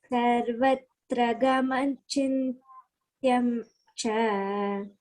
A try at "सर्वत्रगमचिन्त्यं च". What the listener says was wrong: Chintyan cha. Cha you should not elongate. Okay, it's a short vowel.